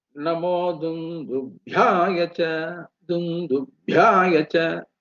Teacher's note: After du, Anudata, lower tone, bhya is coming as higher tone.